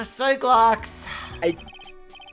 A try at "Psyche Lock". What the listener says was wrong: is definitely Psyche Lock. It's Psyche, like, you know, one's mental state, not psych, like, gotcha.